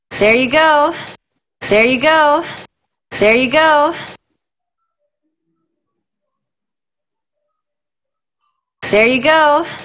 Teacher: Try to do it really smoothly connected with that peak of stress on go.